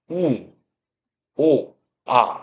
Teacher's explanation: 소리를 낼 때 혀의 최고점이 입 안에 뒤쪽으로 이렇게 쏠리게 됩니다. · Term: 후설 모음